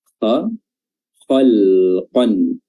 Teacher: Antum asyaddu khalqan amis sama' banaha, ya, asyaddu khalqan, ya, kha ya, makhrajnya adalah adnal khalq, tenggorokan bagian atas